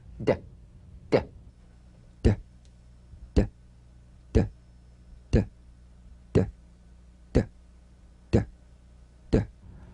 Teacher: Voiced tongue front palatal stop consonant. Play this D drum beat on the springing away of the tongue from the upper gum ridge. Feel a pulsation in the tongue.